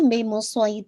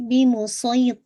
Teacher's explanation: بہتر ہے کہ آپ اس کو ہیوینس یعنی سواد کے ساتھ پڑھیں نا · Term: ہیوی لیٹر